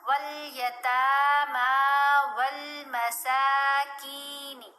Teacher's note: سین کو لمبا کیا، کھڑا زبر ہے، کاف کو لمبا کیا، زیر کے ساتھ یا ساکن حرف مدہ ہے، تو دونوں کو ایک الف کی مقدار جتنا لمبا پڑا.